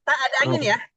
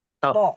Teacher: th itu sama dengan dal tidak ada hembusan nafas